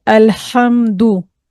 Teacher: आइन और हा यह दोनों खलक के दरमियानी हिस्से से अदा होते हैं। · अल्हम्दु जिसमें कि ये मिडल ऑफ द थ्रोट वाला हा आता है